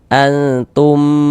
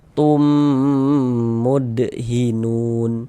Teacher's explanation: Maka ini kita baca dengan dengungan, kita dengungkan. Antum, di bagian tumnya itu suaranya kita tahan, kita panjangkan sejenak ya, sepanjang 2 harokat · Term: idgham mimi